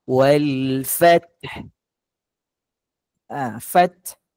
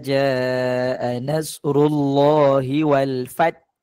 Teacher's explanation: waktu kita menyebut ha pedas ni a di penghujung ayat pastikan bunyi ha pedas tu keluar